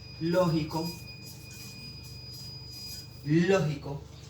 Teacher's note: lleva el acento en la antepenúltima sílaba, es decir, es una palabra esdrújula. Otro ejemplo que encontraremos, por ejemplo, plátano, última, penúltima y antepenúltima sílaba.